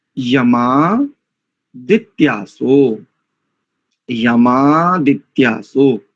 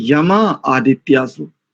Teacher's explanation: दोनों दीर्घ आकार आदित्यासः इस शब्द का, और यमा इस शब्द का आकार, तो दोनों को संधि हो गई। अकः सवर्णे दीर्घ, दीर्घ संधि हो गई, तो यमादित्यासो।